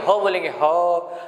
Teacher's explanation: तो ह भी कंठ से निकल रहा है